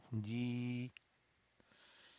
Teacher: Jim, ya, kasra combination will give you two harakat mad. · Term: natural mud